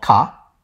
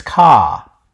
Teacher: commonwealth english american english uses the older pronunciation of car car when england english dropped the r the preceding vowel was lengthened